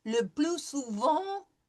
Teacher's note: Le plus souvent, no pronouncing of the t.